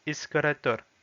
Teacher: il n'y a pas de iode, donc ça ne se prononce pas ié, ça se prononce vraiment e